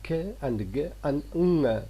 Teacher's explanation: They are vela sounds because we have got the raising of the back of the tongue towards the velum or the soft palate. Now when these sounds are found after some sounds, those sounds are velarized.